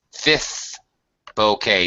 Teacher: right this um this is the fifth bouquet Bou how yeah we don't pronounce the T the t is silent fifth bouquet notice fifth I don't really pronounce the second F